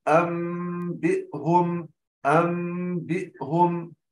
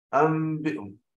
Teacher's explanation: ويكون إخفاء الميم بانطباق الشفتين بالملامسة، انطباق ملامسة وليس انطباق ضغط على الشفتين. المرحلة الثالثة تكون بإثبات الغنة في الميم بمقدار حركتين.